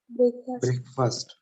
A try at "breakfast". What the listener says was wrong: But if you go and listen to the pronunciation, it is breakfast. F-A nahi hai, F-U pronounce hota.